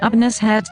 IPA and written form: ʊˈpənɪˌʃədz (Upanishads)